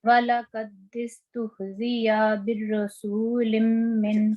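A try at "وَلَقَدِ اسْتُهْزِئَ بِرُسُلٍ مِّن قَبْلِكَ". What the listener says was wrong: سین پہ لمبا نہیں کریں گے نا، وہ یہ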